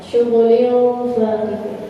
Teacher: seharusnya kalau kita mengucapin ikhfa itu dekatkan samarnya ke huruf fa-nya. Misalnya nun mati ketemu fa atau tanwin ketemu fa.